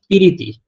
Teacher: প্রীতিটা ভেঙে পিরিতি হলো মাঝখানে কিন্তু এক্সট্রা স্বরধ্বনি আসলো ই স্বরধ্বনি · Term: স্বরাভক্তি